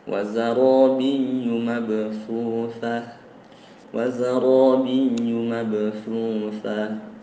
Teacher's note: Di situ ada ya yang musyaddad berharokat syiddah ya. Jadi di situ dijelaskan syiddahnya dengan gaya membaca nabr namanya.